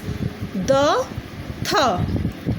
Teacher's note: Dental, articulated by the tip of the tongue against the upper teeth